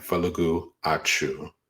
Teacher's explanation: And so because of that, when you just say that falagu achu, say it fast enough, you get this W that just kind of forms there. And so as you combine these words, you get this W or Y sound that just naturally jumps up. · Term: glides